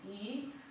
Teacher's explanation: ulimi unapokuwa mbele, tunapata sauti a na sauti e